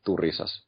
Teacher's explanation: there's really no stress on none of the syllables, really. It's just Turisas.